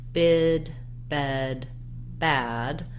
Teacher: those again so you can see my mouth bid bed bad the front of my tongue gets further down and my jaw and mouth gets more open as i say those vowels